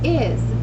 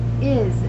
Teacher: The consonant S at the end of the word can stand for the Z sound.